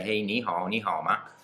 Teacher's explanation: if you've got 2 third tones together, the first third tone becomes a second tone